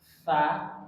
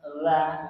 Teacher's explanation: kalau tsa itu lidahnya agak keluar dikit ts tapi kalau dza lidahnya agak dalam